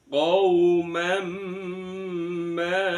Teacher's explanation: dibaca idgham bighunnaah dimasukkan disertai dengan mendengung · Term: idgham bi gunnah